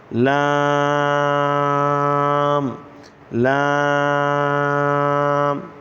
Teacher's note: जबान की करवट के आखिर से नोक तक का हिस्सा जब ऊपर एक दाढ़ और दांतों के मसूड़ों से लगे तो इससे लाम अदा होता है · زبان کی کروٹ کے آخر سے نوک تک کا حصہ جب اوپر ایک داڑھ اور دانتوں کے مسوڑوں سے لگے تو اس سے لام ادا ہوتا ہے